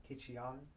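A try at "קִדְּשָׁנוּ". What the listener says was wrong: You're adding one vowel that's not there. Try it again.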